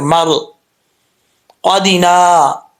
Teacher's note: اس کی جو مخرج ہے کئی دفعہ آپ کو بتا چکا ہوں کہ زبان کی جڑ اوپر والے تالو کے نرم حصے سے لگے گی تو قاف پڑھا جائے گا دو نقطوں والا.